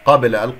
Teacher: حركتين، كسرة الباء والهاء، قابل موته، قابل، القاف مفخم مرتبة ثانية، الباء مقلقلة قلقلة صغرى في وسط الكلام